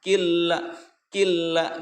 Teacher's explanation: jadi memasukkan saja dari kap ke lam. Killa gitu ya, tanpa adanya mendengung. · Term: idgham bila gunah